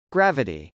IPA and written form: grˈævəti (gravity)